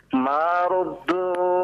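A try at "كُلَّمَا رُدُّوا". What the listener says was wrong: Kullama ruddu. Jangan ma. Kullama. Kullama ruddu.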